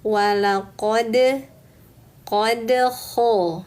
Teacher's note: Apabila untuk huruf dal ujung lidah menempel ke pangkal gigi seri atas. Nah, setelah menempel teman-teman lepaskan. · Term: qalqalah